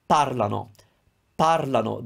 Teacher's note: The stress is never on the ano part. So you have to put the stress of your verb somewhere else before.